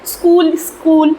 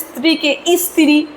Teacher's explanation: উচ্চারণের সুবিধার জন্য যে শব্দের আগে একটা স্বরধ্বনির আগমন ঘটছে সেটাকে আমরা সরাগম বলব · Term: আদি সরাগম